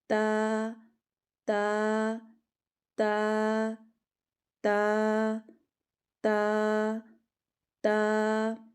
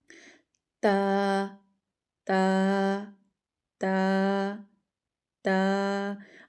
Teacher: زبان کی نوک اوپر والے جو سامنے کے 2 دانت ہیں ان کی جڑ سے جب لگتی ہے تو تا ادا ہوتا ہے · زبان کی نوک اٹھائیں ذرا، اور اوپر والے دانتوں کے اوپر والے جو سامنے کے 2 دانت ہیں ان کے اندرونی کنارے ان کی جڑ کے ساتھ لگائیں